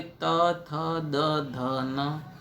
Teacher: આ અક્ષરોને બોલતા જીભ દાંતને સ્પર્શ કરે છે. દાંતનો સ્પર્શ કર્યા વિના આ અક્ષરો બોલી શકાતા નથી. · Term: દંત્ય